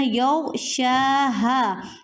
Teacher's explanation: اسی طرح یغشاها، یہاں پہ آپ نے کیا خیال کرنا ہے، غین کو آپ نے موٹا کرنا ہے، شین کو تھوڑا سا کھینچ کر پڑھنا ہے، ایک الف کے برابر آپ نے لمبا کرنا ہے